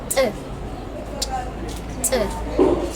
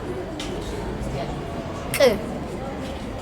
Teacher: The ejectives have double articulation at the glottis level and at the place where the tongue touches the palate.